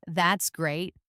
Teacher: For example, saying, "That's great." With an excited, high-pitched voice means something very different from saying, "That's great." with a flat, uninterested, maybe even sarcastic voice. The exact same words can mean completely opposite things simply by how your voice sounds.